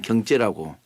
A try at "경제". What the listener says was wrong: 경제 어산. 째에다 발을 좀 강하게 하시네요. 경제가 아니고 경제라 그러면.